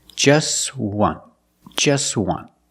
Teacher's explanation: We see the T is between consonants, so it's silent. Link the sounds together.